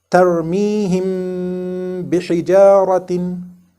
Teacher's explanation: we conceal this mim sakin between the lips in order to prepare for reading the letter ba after it. This concealment of mim sakin usually happens in between two words and not in a single word.